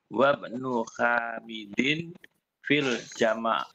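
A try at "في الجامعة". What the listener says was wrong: Salah, bukan jama. Fil jami'ati.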